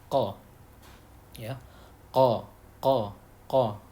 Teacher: Yang pertama pangkal lidah dan langit-langit mulut bagian belakang. Nah, dua anggota ini bertemu dan muncullah huruf qa